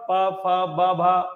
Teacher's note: ठीक है, और प फ ब भ जिनको बोलते समय जिव्या सॉरी होठ आपस में स्पर्श करते हैं, इसीलिए इनको हम ओष्ठ के नाम से जानते हैं।